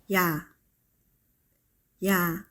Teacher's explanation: Try making very short 이(yi) sound with 아(ah) sound. 이(yi) should be very fast and short, and 아 should come right after. · E should be very fast and short, and A should come right after. If you do it fast enough, it should sound like ya.